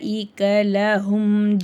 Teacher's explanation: மின் [இசை] [இசை] அசாவிரபிசூனியாபாத்ரம் முத்தக்கினீல் நியமஸாப் வஹசூனத் முர்த்தா உலாக்க இந்த இடத்துல லாம் மேல சின்ன மத் இருக்கு மூணுல இருந்து நாலு அலிப் வரைக்கும் நல்லா நீட்டி ஓதணும்